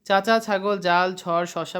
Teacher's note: যেসব ব্যঞ্জন ধ্বনি উচ্চারণের সময় জীভের ডগা খানিকটা প্রসারিত হয়ে শক্ত তালুর কাছে বাধা পথে বাধা সৃষ্টি করে সেগুলোকে তালব্য ব্যঞ্জন বলে